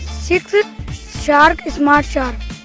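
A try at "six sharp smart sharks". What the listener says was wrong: शार्क नहीं, सिक्स शार्प स्मार्ट शार्क,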